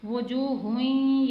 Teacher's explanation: یہاں پر ادغام کا قاعدہ اپلائی کیا ہے، یعنی دو پیش کی تنوین کے بعد حروف یرملون میں سے یا آ رہا ہے، اسے پڑھنے کا طریقہ کیا ہے، یعنی ادغام مال غنہ ہوگا، یعنی غنہ بھی کیا جائے گا اور ایک حروف کو دوسرے میں شامل بھی کیا جائے گا